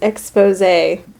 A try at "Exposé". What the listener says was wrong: not Expose. So if it's like a straight line over it, it's a long E, and if it's like an accent, then it turns into an A.